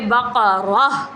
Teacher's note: تا کے اوپر کھڑا زبر 2 زبر آ جاتے ہیں تو وہ ہا بن جاتا ہے، تا نہیں رہتا، اس کی تا والی چیز ختم ہو جاتی ہے